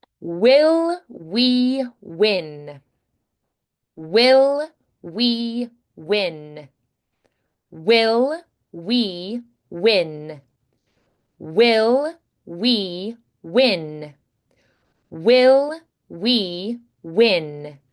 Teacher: you'll have to round and then pronounce the rest of the word and then round again, pronounce the rest of the word, round again. So it's going to be a constant re-rounding.